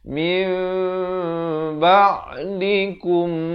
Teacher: kita menukarkan daripada bunyi nun kepada bunyi mim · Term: iqlab